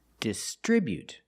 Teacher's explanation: First, let's look at the verb distribute. We put the stress on the second syllable distribute.